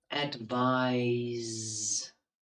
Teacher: listen to how I pronounce it the S is voiced